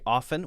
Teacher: I say often without the T